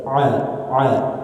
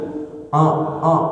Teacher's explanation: Nah, di ain pada huruf ain jangan sampai tercampur menjadi huruf khayshum. Ain itu adalah huruf tenggorokan, halki, wastul halki, tenggorokan bagian tengah. Jadi jangan sampai masuk ke hidung.